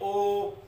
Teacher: बनाते हैं तो हो गया देखे ओ, ओ बोलते हैं तो कंठ से निकल करके बाद में जो हवा निकल रही है तो अपने होठों को गोल कर रही है तो कंठ हो रहे होट हो गए, ओ दो तो कंठोष्ठ।